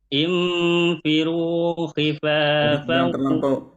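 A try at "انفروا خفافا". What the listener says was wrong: Jangan terlampau rapat mulutnya.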